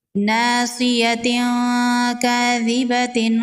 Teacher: تنوین کی آواز کو ناک میں چھپائیں گے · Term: اخفا